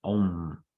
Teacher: Okay, so if it was OM, no dot, it would be Om, but it's Om. Okay, it's a nasalized O, not a letter O, a letter M